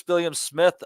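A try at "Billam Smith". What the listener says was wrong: It's Billam. It's not like William. It's Billam.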